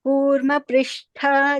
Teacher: this Kurma Prishtha, the Shtha is Mahaprana.